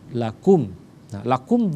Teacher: syafawi syafatun dengan kedua bibir yang tertutup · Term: izhar syafawi